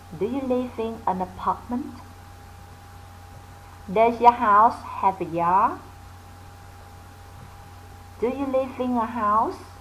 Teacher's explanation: Vậy chúng ta nhớ là ngữ điệu ở câu hỏi yes no là phải goes up, lên giọng nha.